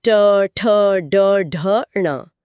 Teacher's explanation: मतलब ध्वनि का केंद्र गले से खिसककर मुंह के बीच में आ गया है और यात्रा यहीं नहीं रुकती। अब जीभ को पीछे की तरफ मोड़कर एक हुक की तरह बना लें और तालु के ऊपरी खुरदरे हिस्से पर मारें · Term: मूर्धन्य ध्वनियां